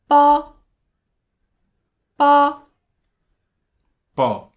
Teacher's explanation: this line is pronounced by joining lips therefore you have to join Two Lips to produce the sound